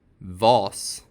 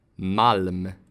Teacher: This vowel is a [ɒː]. Its short form sounds like [a].